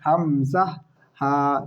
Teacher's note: হামজা, এটা হলকের একদম মানে গলার একদম শুরু থেকে হয়